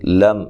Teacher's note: میم ساکن کا اظہار ہے، غنہ نہیں کرنا